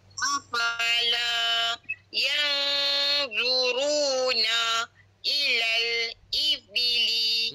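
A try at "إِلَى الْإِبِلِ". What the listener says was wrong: I itu jangan panjang. I itu pendek je. Ilal satu je.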